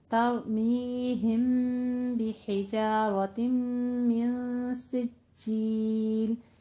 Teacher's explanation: اخفا شفی ہو رہا ہے، تو اس لیے ہم میم اور با کو ملا کے پڑھیں گے